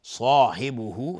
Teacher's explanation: صاد از حروف استعلاء الف هم تابع صاد حکم استعلاء به خودش میگیره، غلیظ تلفظ میشه